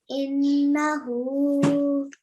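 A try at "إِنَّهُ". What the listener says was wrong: Just stay on it for a little longer, okay? Try to stay on it longer and try and recite it again.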